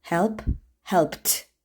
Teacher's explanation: Əgər feillərin sonu kar samitlərdən biri ilə bitirsə, onda id hərf birləşməsi t səsini verir.